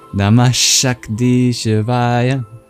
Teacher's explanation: that sibilant is just the regular one we have in English with the SH sound, the palatal sibilant